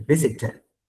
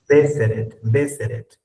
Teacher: Clarito, se escucha una E y una E latinas, igualito. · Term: inglés británico